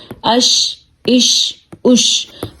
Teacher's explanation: جھٹکا ہم بالکل نہیں دیں گے کیونکہ یہ حروف قلقلہ نہیں ہے